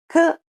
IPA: k